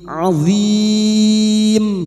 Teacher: Mad arid lukun empat harakat kita panjangkan